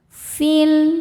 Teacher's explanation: Alif lamnya dinamakan dengan alif lam qomariyah sebab alif lam menghadapi huruf qomariyah yaitu mim, maka lam sukun dibaca idhar atau jelas. · Cara bacanya panjang 2 harokat. Namun jika diteruskan fi ya-nya gugur ya atau pemanjangnya gugur, fi-nya jadi pendek fil. Karena ada proses namanya takholus bil hadfi.